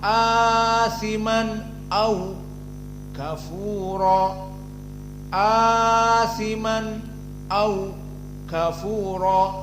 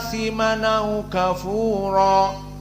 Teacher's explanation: Jadi asimanau, asimanau, bukan kalau jumhur asiman au kafura, asiman au kafura, ini jumhur. Adapun Wars, nunnya difatahkan dan hamzahnya dihilangkan.